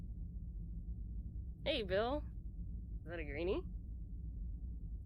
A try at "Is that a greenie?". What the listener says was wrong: Enunciate the is that a little more. Is that a greenie? Say it more kind of like, you know, grinning, like, is that a greenie?